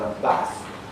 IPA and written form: bæθ (bath)